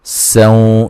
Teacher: سین کو باریک سیٹی سے ادا کریں گے اور نون تنوین کا ادغام مع الغنہ ہے۔